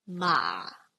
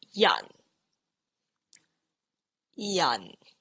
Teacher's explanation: you start at the bottom of your vocal tone, so vocal range, and then you want to suppress your voice even more. This is the shape it makes. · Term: low falling